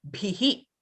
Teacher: an expelling of breath on an open mouth. Your mouth was open in the E shape when you did bhi. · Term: visargaha